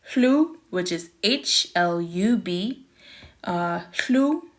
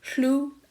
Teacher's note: we do pronounce the H and the L together. So HLU.